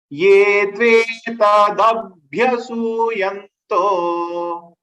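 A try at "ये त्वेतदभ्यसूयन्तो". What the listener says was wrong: Ye tvetadabhyasuyanto. Ye tvetadabhyasuyanto.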